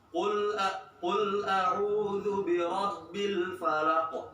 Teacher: Kalau qaf enggak ditahan 2 harokat, tapi tetap ditekan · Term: qalqalah kubra